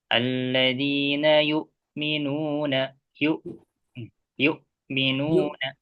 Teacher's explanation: hamzah sukun itu ada sifat jahar dan syiddah ya. Suaranya itu ketahan ya, tertahan, jadi tidak ada suara yang mengalir